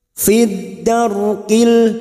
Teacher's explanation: ra sukun yang sebelumnya fathah kita baca tafkhim atau tebal. Fid darqil, kil masuk pada alif lam qamariyah, idhar qamariyah.